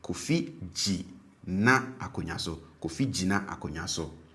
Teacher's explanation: the tone on the first syllable is low and that on the second syllable is high.